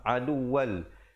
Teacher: Terus masuk tanpa dengung di atas lam, aduwal.